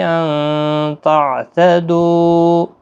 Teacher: نون ساکن کے بعد حروف اخفاء کا تا ہے، اخفاء حقیقی ہوگا، تعتدو، دو واو مدہ ہے، اور یہاں پر چھوٹا سا میم آپ دیکھ رہے ہیں، وقف لازم کی نشانی ہے، یہاں پر ہر حال میں آپ نے وقف کرنا ہے مد کے ساتھ۔